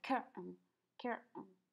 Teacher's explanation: la T no la pronunciamos y hacemos como una pequeña pausa